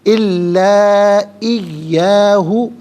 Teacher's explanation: مد منفصل ہے، مد جائز بھی کہتے ہیں، منیمم اس کو 3 سے 4 حرکات کی مقدار کھینچ کر پڑھنا چاہیے، زیادہ سے زیادہ اس کو 5 سے 6 حرکات کی مقدار کھینچ کر پڑھ سکتے ہیں۔